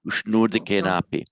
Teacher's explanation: The A in Sanskrit, yes, is always long. And the O is always long and the A is always long.